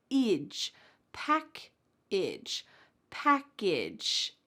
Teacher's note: That A is actually going to sound like a short I.